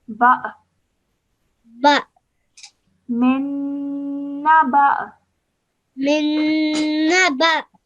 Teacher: because of the Hamza and it has a sukoon on it, you make a slight jerk sound when you are joining the ba to the Hamza